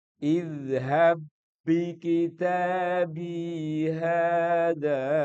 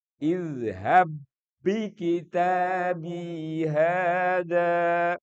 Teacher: menyatu ba pertama masuk ke ba kedua tidak ada tidak ada qolqala. Beda loh bacaannya dengan idhab bikitab itu salah. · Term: idgham